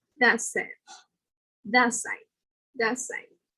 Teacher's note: the T at the end of that, the word that, will become like an S